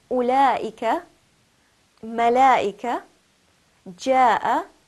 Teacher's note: it must be stretched for a minimum of four counts and a maximum of six counts